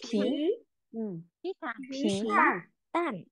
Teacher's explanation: Bật hơi nhá, nhớ bật hơi mọi người ơi.